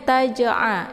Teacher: di sini jimnya terdapat di pertengahan kalimat maka ini dinamakan dengan Qalqalah sugro ya jadi pantulannya itu sedikit pantulan ringan ya Jadi tidak begitu kuat dibaca pendek ini a ya bukan Hamzah ya